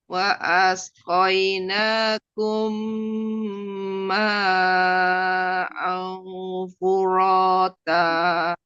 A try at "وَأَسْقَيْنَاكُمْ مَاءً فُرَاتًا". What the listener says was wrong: A-nya jangan mau ke ain ya. A biasa itu ya. Furota.